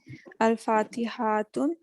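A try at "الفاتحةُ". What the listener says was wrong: Again, Al with no tanween. So Al-Fatihatu.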